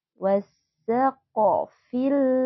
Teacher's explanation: huruf q itu kita bacanya harus memantul karena qf termasuk salah satu huruf Qalqalah